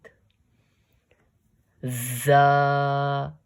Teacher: It will read in a slightly stern voice, forcefully placing the tip of the tongue between the two teeth.